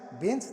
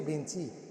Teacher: বিদেশি শব্দের শেষে সাধারণত হসন্ত বসে, কিন্তু আমরা উচ্চারণ সময় স্বরধ্বনি উচ্চারণ করে বসি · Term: অন্তঃস্বরগম